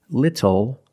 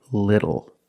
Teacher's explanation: the T changes to a fast D in American pronunciation